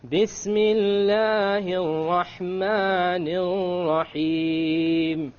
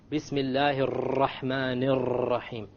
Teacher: Notice the two R's with the shadda on them in the Rahman. I didn't roll them.